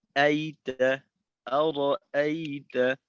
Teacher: এই দুই হামজার উচ্চারণ কিন্তু একেবারে একরকম না, তুলনামূলকভাবে প্রথম হামজাটার উচ্চারণটা একটু বেশি জোরালো হয় দ্বিতীয়টার তুলনায়। তবে দ্বিতীয়টা যেন একেবারে শিথিল হয়ে আইতা এমনটা না হয়, আইতা না, আইতা, আইতা, আইতা।